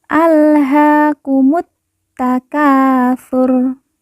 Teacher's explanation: Ha kita baca panjang 2 harokat karena di atasnya terdapat alif kecil yang merupakan tanda baca panjang 2 harokat. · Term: panjang dua harakat